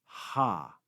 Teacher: letter ge in latin next we have the consonant ha ha like the english letter h it makes the sound just a breath